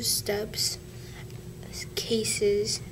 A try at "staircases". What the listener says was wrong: Try that again. You got steps and cases. Now, what is it?